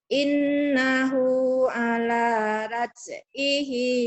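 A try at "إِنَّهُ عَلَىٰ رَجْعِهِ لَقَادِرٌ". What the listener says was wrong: Raj, bukan raj. Roj. Ro, tapi jangan ra ya, ro.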